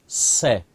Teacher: और जो तीसरा स होता है इसके उच्चारण में जीवा दांतों को छुएगी। जब जीवा दांतों को छुएगी तो वहां से सीटी निकलती है